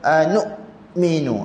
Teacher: Bila dekat hamzah tu, suara kita stop sekejap. · Dekat hamzah ni sahaja yang suara kita kena ingat, suara kena putus, bukan nafas suara. Jadi kena baca anu'minu.